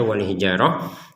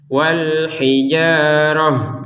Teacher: Nah, wal hijarah di sini ada ta, kita bacanya wal hijarah karena berhenti. Jadi huruf ta-nya terbacanya ha dengan berhenti.